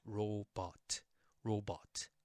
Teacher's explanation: in the Korean pronunciation we don't have that R sound